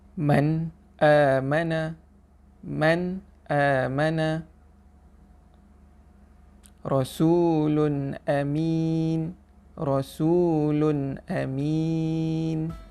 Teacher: Apabila nun mati bertemu dengan salah satu daripada huruf izhar, iaitu alif, maka hukum bacaan dia adalah terang dan jelas, tidak dengung.